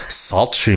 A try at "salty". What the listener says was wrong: Oh, wait, you said sultry, not salty.